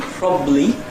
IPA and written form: ˈprɒbli (probably)